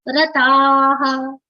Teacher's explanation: Long ta and then the pronunciation of visarga has come like ha.